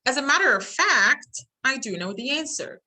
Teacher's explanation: the statement has a falling intonation, but the introductory word has a rising.